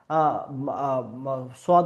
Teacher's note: সদকে উচ্চারণের ক্ষেত্রে এই যে আমাদের জিহ্বা, জিহ্বের যে জিহ্বার যে পাশের জিহ্বার যে ধারগুলো, পাশের অংশগুলো, সাইডগুলো, এই সাইডগুলো উপরের যে দাঁতের মাড়ি, উপরের যে দাঁতের গোড়ালি, এখানে গিয়ে লাগবে